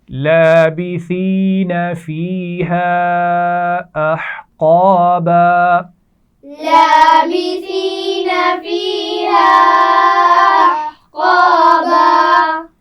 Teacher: فیہا یا مدہ ہے اور الف مدہ بھی ہے، اور چھوٹی مد ہے تو اس کو ہم کھینچ کر پڑھیں گے. حروف مدہ سے زیادہ کھینچ کر پڑھا جاتا ہے.